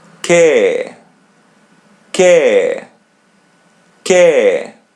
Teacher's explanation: we don't pronounce the first vowel, we pronounce the second letter E or A in Portuguese.